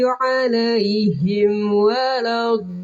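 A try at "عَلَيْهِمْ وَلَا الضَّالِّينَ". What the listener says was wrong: Tinggal rapatin lagi. Alaihim wa. Jangan renggang. Alaihim wa. Sempurnakan itu. Karena mim ketemu wawu sama fa itu rawan ini. Rawan kurang sempurna. Karena sama-sama huruf bibir.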